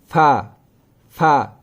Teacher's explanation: फा का मखारिज है सनाया उलिया के किनारे निचले वाले होठ पर।